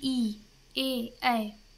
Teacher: अग्र स्वर यानी जीभ के आगे के भाग से जो निकलते हैं